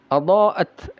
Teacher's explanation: ya ini tak yang sukun ada sifat hamasnya, ada udara yang keluar.